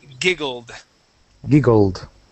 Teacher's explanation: I want to get a D sound so instead of a t